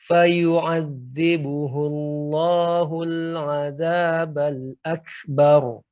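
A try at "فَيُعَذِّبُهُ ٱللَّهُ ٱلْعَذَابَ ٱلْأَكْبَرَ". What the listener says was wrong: Akan tapi di sini harus lebih lagi diperhatikan ain. Ainnya harus lebih lembut lagi, Pak. Fayu'adzibuhu Allahul 'adzabal akbar.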